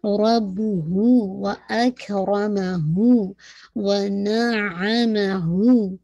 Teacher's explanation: را ہیوی رکھیے گا, اک رو پہ ہمس بھی ہے, اور ساتھ میں اک پہ جو ہے شدہ بھی ہے